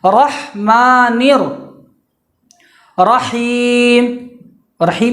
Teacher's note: رحمان میں جو ہا ہے وہ بیچ حلق سے ہی نکالا جائے، اس کو بیچ حلق سے ادا کیا جائے۔